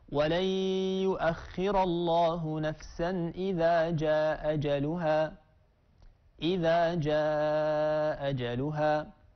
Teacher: قالون والدوري رحمهما الله قرأ بإسقاط الهمزة الأولى مع المد والقصر